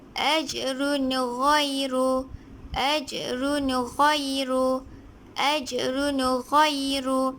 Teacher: apabila tanwin dua baris di hadapan bertemu dengan huruf ghin, maka ia dibaca jelas